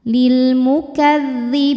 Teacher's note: Mad tabi'inya adalah ya sukun didahului harokat kasrah, kemudian huruf yang disukunkannya adalah huruf nun, maka huruf ba-nya ini panjang, boleh 2, boleh 4 atau 6 harokat asal konsisten dalam sekali bacaan. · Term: mad arid li sukun